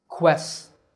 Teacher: the first syllable is made with a k combined with a wha sound by rounding your lips